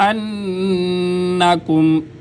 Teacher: نون پہ غنہ، نون مشدد میں مشدد پہ غنہ